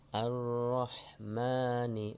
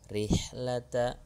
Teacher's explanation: Tafkhim dan tarqiq ada ar-rahmani, ra-nya tafkhim. Tarqiqnya rihlata, ra-nya kasrah.